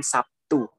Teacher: Sabtu dalam bahasa Indonesia sering diucapkan Sabtu, di mana terlihat bunyi B berubah menjadi P. Sebagai akibat pengaruh T, bunyi B adalah bunyi hambat bersuara, sedangkan bunyi T adalah bunyi hambat tak bersuara. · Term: asimilasi